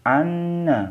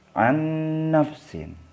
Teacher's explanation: Contoh yang ketiga, nun sukun atau nun mati ketemu dengan nun, tulisannya an nafsin. Ini nun mati atau nun sukun dibaca anna, masuk ke nun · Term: idgham bi gunnah